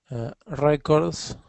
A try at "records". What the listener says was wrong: So try not to let your tongue roll like that. So records.